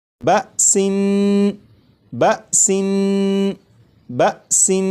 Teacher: نون کو پڑھتے ہوئے زبان تالو سے لگا کر پڑھوں گا